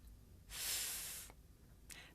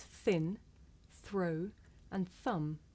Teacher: I make the sound by sticking my tongue up just a little bit and blowing air between my tongue and my top teeth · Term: voiceless consonant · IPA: /θ/